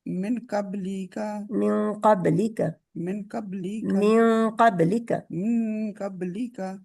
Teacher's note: थोड़ा सा नून हाइड करके इसको कहते हैं इख्फा करना, क्योंकि काफ जो है, काफ जो है वो इख्फा का लेटर है।